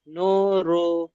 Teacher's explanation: ও মাদ্দাকে এক আলিফ টান দিতে হবে